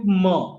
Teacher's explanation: In m too, our lips close, but our nasal tract is open, so air is flowing comparatively freer